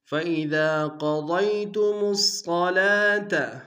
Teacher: فَإِذَا قَضَيْتُمُ الصَّلَاةَ، فَإِذَا میں دال کے ساتھ الف مدہ ہے کہ دال میں کھینچیں گے، دال کو باریک ادا کریں گے، قوف کو ضاد کو دونوں کو موٹا ادا کریں گے، میم کو آگے صاد کے ساتھ ملائیں گے، صاد کے اوپر شدہ زور دیں گے، صاد کو موٹا ادا کریں گے، لام کے اوپر کھڑا زبر ہے کہ دال میں کھینچیں گے۔